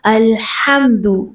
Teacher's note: ہا کو وسط حلق سے نکالیے